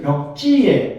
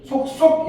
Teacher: 두 번째 음절에서 된소리가 나타나는 점을 유의해야겠어